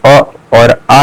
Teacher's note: अ और आ जो है कंठ से उच्चारित होंगे